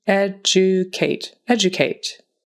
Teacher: That D is a J sound.